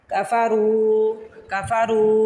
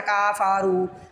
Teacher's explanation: کاف کو بھی نہیں لمبا کرنا فا کو بھی نہیں کرنا را کو کرنا